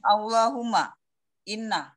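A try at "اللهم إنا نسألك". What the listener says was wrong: Jangan inna. Inna itu panjang, Bu.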